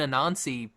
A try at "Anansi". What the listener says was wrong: You're adding an extra syllable in there. It's Anansi. I thought you were saying Anansi.